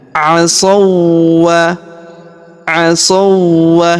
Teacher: huruf wau sukun langsung melebur masuk ke huruf wau yang berharakat tasydid. Ya, kita tahan dan tekan alifnya tidak dibaca.